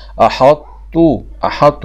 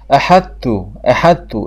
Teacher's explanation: يظهر صفة الطاء وهي الإتباق ويذهب حرف الطاء